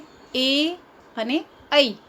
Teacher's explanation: એ અને ઐ જેનો ઉચ્ચાર આપણે કંઠ્ય અને તાલવ્ય બંને દ્વારા કરીએ છીએ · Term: દીર્ઘ સંધિ